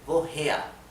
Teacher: la R final se pronuncia de una forma casi imperceptible